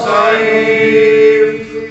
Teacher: صاد کو موٹا بھی کرنا ہے اور اس میں حرف لین بھی ہے, نرم بھی پڑھنا ہے